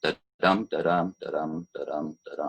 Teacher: We can break syllables up into metrical feet. So an unstressed followed by a stressed da-dum, da-dum is an iamb